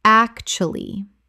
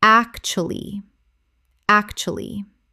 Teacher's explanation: Three syllables in natural speech. The middle U almost vanishes.